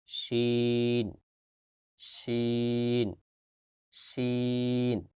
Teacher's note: জিহ্বার মধ্যখান থেকে শিন উচ্চারিত হয়েছে